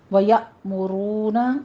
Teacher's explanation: یا میں جھٹکے کے ساتھ پڑھیں گے حمزہ کو، میم کے اوپر ضمہ ہے، ہونٹ گول کر لیجئے، رو میں بھی را مفخم ہے، ہونٹوں کو گول کر کے واو مدہ ادا کرنا ہے۔